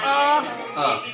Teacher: जीभ के मध्य भाग से बोला जाता है।